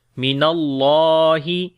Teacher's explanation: اللہ کے نام کو موٹا پڑھیں گے، اس سے پہلے زبر آ گئی اور لمبا بھی کریں گے۔